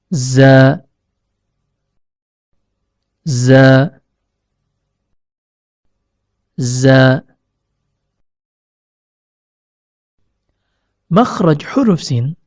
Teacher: huruf shod keluar dari pertemuan antara ujung lidah dengan bagian dalam gigi seri bawah